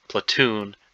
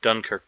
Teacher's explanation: It's about the where the which syllable is stressed. Platoon, the second syllable is stressed. Dunkirk, the first syllable is stressed.